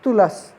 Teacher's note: हमारी जीवा दांतों का स्पर्श करती है।